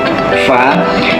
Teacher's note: bibir bawah dari gigi atas itu hurufnya fa